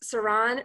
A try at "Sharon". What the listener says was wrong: Or is it's Sharon. It's like an SH. So Sharon is the correct.